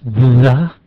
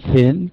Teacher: You have the voiced TH, the, and the unvoiced thin.